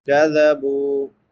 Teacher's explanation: کذبو کاف باریک ہے، با کے بعد واو مدہ ہے، واو ساکن ما قبل ضمہ یعنی پیش ہے تو اس کو بھی ایک الف کے برابر لمبا کریں گے